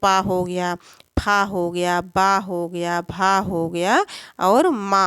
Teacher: ओठों को द्वारा स्वास का अवरोध हो दोनों ओठों के द्वारा ओठों के द्वारा स्वास का क्या होता है अवरोध होता है उसे ओष्ठ व्यंजन कहते हैं